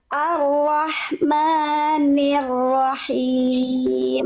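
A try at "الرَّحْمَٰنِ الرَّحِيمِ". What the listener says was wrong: Maknya kepanjangan. Maknya 2 harokat. Ar-Rahmanir-Rahim.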